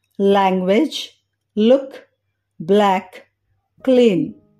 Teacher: tip of tongue అంటే నాలుక చివరి భాగం బోనీ రిడ్జ్ అంటే పై పండ్ల వెనుక గట్టి భాగం పై పెట్టినప్పుడు లైట్ ఎల్ సౌండ్ ని గమనించవచ్చు లైట్ ఎల్ ని పలికేటప్పుడు అద్దంలో చూస్తే tip of tongue బోనీ ridge